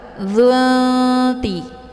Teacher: Cara bacanya nunnya disamarkan kemudian siap-siap masuk ke huruf ta. Dzunti. Jadi ini nunnya juga bagai bacaan yang digantungkan. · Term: ikhfa aqrab